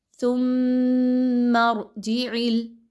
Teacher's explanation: آپ کو اس چیز کا خیال رکھنا ہے کہ ثا کی ادائیگی میں سیٹی بالکل بھی نہ آئے۔ آپ نے زبان کی نوک کو تھوڑا سا باہر کی طرف نکالیے اور یہاں پر دانتوں کے درمیان میں دیجئے، دانتوں کے پچھلے سرے کے ساتھ ملائیے تو ثا کی ادائیگی آسانی سے ہوگی۔